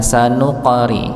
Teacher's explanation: ada qaf dengan sukun maka dipantulkan